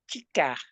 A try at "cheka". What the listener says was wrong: Cheka, che, not chi, cheka.